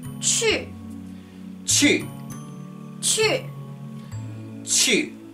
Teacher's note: so it's a very short sharp tone straight down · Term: fourth tone